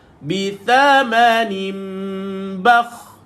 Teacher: bila baca kha, tuan-tuan kena bacakan bunyi bakh. Mulut tuan-tuan kena bulat.